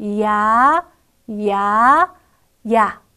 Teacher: 야 같은 경우에는 이로 시작해서 아로 끝나는 이중 모음입니다. 이를 약하게, 아를 강하게 발음을 내면 좋겠지요.